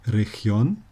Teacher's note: Region wird nicht auf der vorletzten Silbe betont